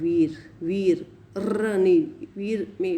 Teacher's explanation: degree and these articulators are coming in contact with each other articulators do not come so close no audible friction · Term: frictionless continuance